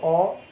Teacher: তাহলে বিবৃত উচ্চারণের সময় চোয়ালের ফাঁক বেশি হয় বা চোয়াল প্রসারণ ঘটে, আর ঠোঁট গোলাকৃতি হয় না, · যখন তুমি অ বলছো অ, তখন কিন্তু অ, এই যে আমাদের চোয়ালের যে দুই পাটি দাঁত আছে, উপরের এবং নিচের সারির দাঁত, অ বললে একটু কি প্রসারণ করবে, একটু স্পেস বেশি নেবে, আর ঠোঁট কিন্তু ফ্ল্যাট থাকবে, স্বাভাবিক থাকবে, অ সমান্তরাল থাকবে।